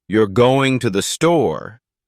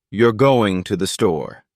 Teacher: if your voice Rises at the end it becomes a question you're going to the store but if your voice Falls at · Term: intonation